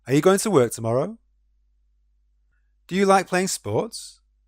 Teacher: For yes or no questions, however, you'll hear a rising intonation at the end of the sentence.